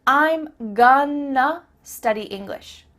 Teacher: I'm gonna study English means I'm going to study English. That word to simply becomes a.